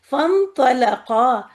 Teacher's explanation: لام باریک ہوگا، اور قاف موٹا ہوگا، اور قاف کے بعد یہ الف بھی موٹا ہی رہے گا